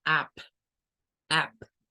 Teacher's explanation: Parece como que comenzamos con una A, pero terminamos sacando una U. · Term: circunflejo